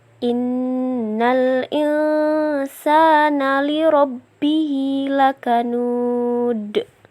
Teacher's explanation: Nun bertasydid, hukumnya idgham bigunah, yang artinya dibaca dengung satu alif. Nun sukun bertemu sin, hukumnya ikhfa, yang artinya dibaca samar dan dengung selama satu alif. Dal dibaca qalqalah.